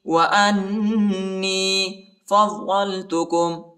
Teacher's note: حمزہ کو نون کے ساتھ ملائیں گے اور نون کو یا کے ساتھ